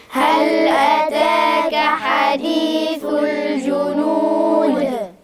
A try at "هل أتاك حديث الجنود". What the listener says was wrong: اعدل النبرة بتاعتك انت خلاص تعبت؟ هل أتاك حديث الجنود؟